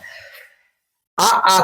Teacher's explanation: अ आ को जब बोलेंगे तो आपके कंठ से आवाज आएगी।